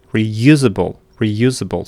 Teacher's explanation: You can see in the transcription you have this stroke temperature reusable reusable. So the second syllable is stressed.